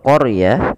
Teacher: huruf r-nya ditebalkan karena huruf ro yang didahului dengan huruf fathah maka dia kita namakan dengan ro tafim harus tebal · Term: ra tafkhim